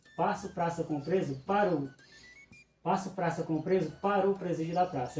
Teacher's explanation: automaticamente junta-se essa sílaba, né, a última sílaba de para, com o artigo que vem em seguida. Então, no lugar de para o, fica parou. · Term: elisão